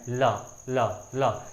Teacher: जब भी हम ला का उच्चारण कर रहे हैं तो अपनी जीभ कहाँ टच हो रही है? आपकी दांत में हो रही है